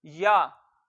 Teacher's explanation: उसके बाद हमने देखा या के ऊपर जबर है, जबर मुंह आवाज खोलकर पढ़ेंगे तो, और या को लंबा करके नहीं पढ़ेंगे। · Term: या जबर